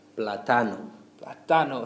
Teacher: a there it would sound like platano platano so we we're stressing that second a · So we're stressing that second A.